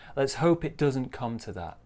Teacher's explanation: Small stress on doesn't too.